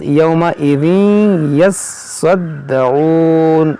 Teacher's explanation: तीन हर्फ मुशद्दद है, तीनों हर्फ को पढ़ना है दो दो बार, लेकिन बाज़ लोग इसी में गलती कर जाते हैं, किसी हर्फ को पढ़ते हैं दो बार और किसी को पढ़ देते हैं एक ही बार, तो इसको दो बार होना चाहिए।